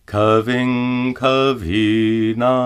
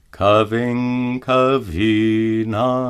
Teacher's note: Notice that the anuswara is pronounced as a guttural nga.